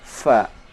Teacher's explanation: Cara membaca huruf fa disertai keluarnya nafas fa. Tidak boleh membaca fa dengan bunyi pa. Nah, ini banyak saudara kita membaca huruf fa dengan bunyi pa.